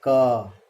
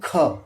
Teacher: यदि इनमें ध्वनियों का आप क्रम देखेंगे तो पहली ध्वनि क अल्प प्राण होती है, उसमें कम हवा निकलती क। लेकिन दूसरी ध्वनि ख अधिक हवा निकलती है। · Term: महाप्राण